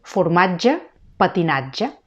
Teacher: La TG, aquesta palatal sonora, que també sol anar entre vocals.